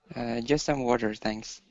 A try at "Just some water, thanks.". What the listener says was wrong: Nice. That was good. Good pronunciation, guys.